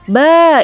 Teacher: Ba itu mad tabi'i ya, karena fathah bertemu dengan alif dibaca 2 harokat.